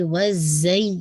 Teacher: وَالتِّینِ نہیں، نی کا ساؤنڈ کمپلیٹ کر کے پورا پھر آپ وَالزَّیتُون، زائی ہے تو آپ کے ٹپ آف دا ٹنگ، آپ کے دانتوں کے فرنٹ جو آپ کی تیت ہے اس کے پیچھے رہے گی، تبھی آپ کے یہ جو وسلنگ سی ساؤنڈ آئے گی، وَالزَّی، یہ والی ساؤنڈ آئے گی، ٹھیک ہے.